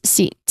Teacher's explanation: Lastly, this is seats. So there's no buzzing sound here. It's all hissing sound.